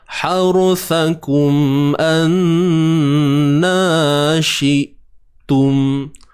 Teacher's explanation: Nun bersabdu wajib dengung, wajibul ghunnah.